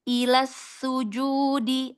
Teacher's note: Alirkan, shofir pada sinnya.